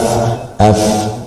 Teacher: cuma yang bermain dua bibir dan gigi bagian atas ya. Coba perhatikan bibir bawah, f normal, tidak ada yang dibuat-buat, tidak maju ya, atau tidak monyong, juga tidak ke belakang, normal. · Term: makhraj fa